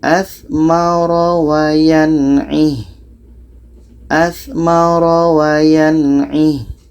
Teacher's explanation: Ada di sini panjang sebab tanda mat dan ya kecil. Ha dhamir ketika berhenti apapun barisnya, walaupun ada tanda mat dan ya kecil, itu tetap dimatikan ha dhamirnya.